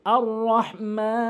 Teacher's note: যদি এখানে আমি ওয়াকফ করি তাহলে আপনি 3 আলিফ টেনে পড়তে হবে।